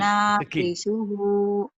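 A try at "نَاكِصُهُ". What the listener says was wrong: Yang panjangnya mana ya? Satu lagi ada yang panjang. Su-nya.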